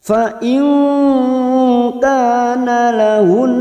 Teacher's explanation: nun sukun bertemu kaf ikfa hakiki. samar yang sungguh-sungguh, kita samarkan bunyi nun sukun 3 harokat. Fa in kana lahun, ka fathah diikuti alif 2 harokat matobi'i.